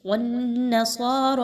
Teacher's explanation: واو اور نون کو آپس میں ملاتے ہوئے نون مشدد کا غنہ کیجیے، آواز کو ناک میں لے کے جائیے۔ نصارى، صاد اور را دونوں کی مقدار ایک جیسی۔